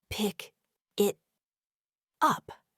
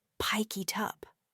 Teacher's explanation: The K sound at the end of pick links seamlessly with the I sound at the beginning of it, causing it to sound much more like pie kit.